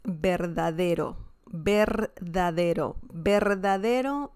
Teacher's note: the first R sound is very strong and the second one is a little softer